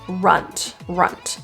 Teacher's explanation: Instead of rent, as you see it spelled, It will be pronounced as runt, runt. So there's a very little lower schwa sound.